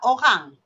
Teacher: Rin dia kuat sebab dia menggunakan uvula, anak tekak. Macam bunyi Jerman dah cakap orang Kedah ni.